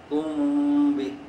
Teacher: ایک ہوتا ہے کم بھی، میں کم نہیں کہہ رہا ہوں، کم بھی، یہ ہونٹوں کا مخرج، میم کا مخرج ہے۔ کم بھی، چونکہ میم کے بعد ساکن کے بعد با ہے تو میم کو مخرج میں چھپائیں گے